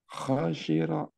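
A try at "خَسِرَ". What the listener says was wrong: Kho-nya tebal Pak begitu kho kho khosiro di sini ya biar nanti kita terbayang gambaran tebal ya nah ini gambarannya ini ada bunyinya nah ini tebal ya si apa namanya itu si suara naik ke atas di sini nekannya ke atas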